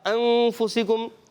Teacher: تو وہاں اخفا ہوتا ہے اخفا ہوگا اخفا کی معنی چھپانا نون کو چھپا کے ادا کریں گے مگر ایک الف کا غنہ بھی کریں گے